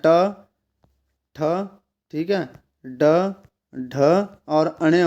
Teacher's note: ड ढ और अण मूर्धा में आते हैं